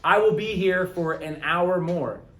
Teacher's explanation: So when we say, I will be here for an hour more. We say an hour because the H is silent.